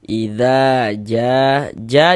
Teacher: Karena di sini ada alif, sebelah sininya ada harokat fathah, ada tanda baca fathah, maka huruf yang memiliki harokat fathahnya dibaca panjang, sehingga dza dibaca panjang. Mad tabi'i panjangnya 2 harokat.